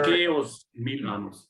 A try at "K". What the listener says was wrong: So it's kind of like how we pronounce the letter K in English. Instead of key as in. So you tend to say key as in opening the door, but it's K as in the letter K.